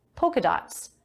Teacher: This pattern is called polka dots, with a silent L.